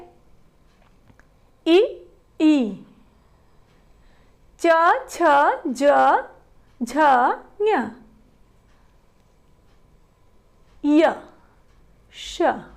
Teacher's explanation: चूंकि इन वर्णों का उच्चारण स्थान तालु है इसलिए इन्हें तालव्य वर्ण कहते हैं